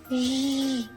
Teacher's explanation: Звук ж завжди твердий. · Так, горло працює. Звук ж дзвінки.